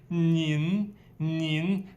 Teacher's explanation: 你 with a little bit nasal sound.